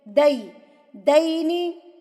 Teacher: دے نہیں ہے دئی ہے, یا کی آواز ڈبل ای کی ہوتی ہے